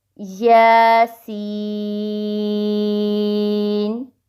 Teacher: یا کے اوپر کھڑی زبر ہے 2 سیکنڈز اور سین کے اوپر مد ہے، اس کو آپ 5 سے 6 سیکنڈز لمبا کر سکتے ہیں۔